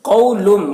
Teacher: قولم یہاں پر دیکھیے تنوین کے بعد حروف ادغام میں سے میم ہے، تو تنوین کو میم سے ملا کر غنہ کے ساتھ پڑھیں گے، اس کو ادغام ناقص کہتے ہیں